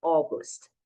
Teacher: esse A e o U, que fica parecendo AU, mas não, a pronúncia é O.